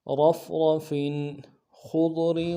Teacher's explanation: خا کو موٹا کریں گے، ضاد کے ساتھ ملائیں گے، ضاد کو بھی موٹا کریں گے · فا تنوین ہے، یہاں پہ اظہار ہوگا